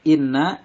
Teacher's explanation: inna ini gunah karena ada nun berharokat tasdid, dinamakan gunah atau gunah musyaddadah, dibaca panjang atau mendengung 2 harokat